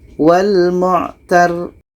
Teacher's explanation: Maka cara berhenti ro ini kita matikan, tapi ro tasydidnya kita baca. Kaedah tasydid adalah ditekan.